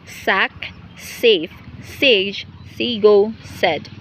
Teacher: the voiceless alveolar sibilants initial